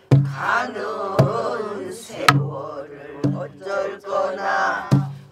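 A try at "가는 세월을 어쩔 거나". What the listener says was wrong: 그것은 참 잘하네.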